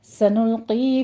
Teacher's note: سنلقی میں قوف کو پر پڑھتے ہوئے یائے مدہ ادا کرنی ہے ، 2 کاؤنٹ کرنا ہے، فی میں بھی یائے مدہ ہے،